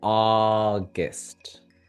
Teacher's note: The first sound ah, long, and the other sound guest. So, you see that balance between the one that we stress and the one that we don't stress.